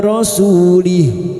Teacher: Su duma diikuti wawu sukun, 2 harokat mad tabi'i. Rasulih, karena kita memilih wakaf di sini, maka ha dhamir yang berharokat panjang pada saat dibaca wakaf kita baca sukun.